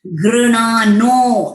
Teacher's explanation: नो जो है वो दीर्घ स्वरिता है, तो पहले दीर्घ मात्रा लेना है, बाद में उसको स्वरिता करना है